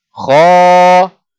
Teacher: Bila bunyi kha, bunyi tu keluar daripada al-jawf. Keluar daripada rongga mulut dan rongga kerongkong. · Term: mak tabi'i